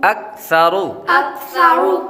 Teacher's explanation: حمزہ کاف زبر اک, حمزة كاف زبر أك, ثا زبر ثا, ثا زبر ثا, اکثا, أكثر را پیش رو, را پیش رو, اکثرو. أكثر را پر پیش ہو تو را کو پر پڑھتے ہیں